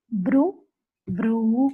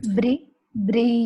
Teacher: no rounding of your lips. It is br, not bru. There is no oo. Bri. It is only r sound.